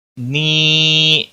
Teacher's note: مد منفصل ہے، تین الف کے برابر کھینچ کر پڑھیں گے